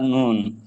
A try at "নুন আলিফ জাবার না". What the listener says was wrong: নুন আলিফ জাবার না, নুন নয়। নুনটা তো অক্ষর, যে অক্ষরটা পড়লাম ওটা হলো নুন। নুনের নুনের যে আওয়াজটা হবে, নুনের যে উচ্চারণটা হবে, উচ্চারণের যে আওয়াজটা হবে, সেটা কি? নুন আলিফ জাবার না।